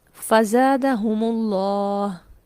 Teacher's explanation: ہم میم ساکن تھا لیکن لفظ اللہ کو پڑھنے کے لیے کیا کیا، میم کو پیش دے دی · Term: میم جمع